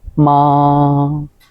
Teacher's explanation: Thanh một: rất đơn giản, giữ ngang